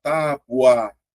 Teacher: você sai do fraco para o forte. Ó. Então eu tenho semivogal mais vogal.